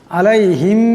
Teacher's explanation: এখানে আইন আছে আওয়াজটা গলা থেকে আনতে হবে আলাইহিম আমরা কোন কোন মানুষ এমন করে হিম এখানে গুন্না করে